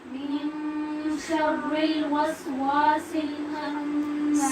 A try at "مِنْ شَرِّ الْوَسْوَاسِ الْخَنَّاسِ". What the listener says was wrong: سین غلط پڑھ رہے ہیں آپ لوگ.